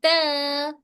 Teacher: ता में सिफत इनफिता है, मतलब हमारी टंग को एकदम फ्लैट रखना है, ना मिडिल पार्ट ऊपर उठेगा ना बैक साइड ऊपर उठेगा, बल्कि टंग हमारी एकदम फ्लैट होगी, बिल्कुल त।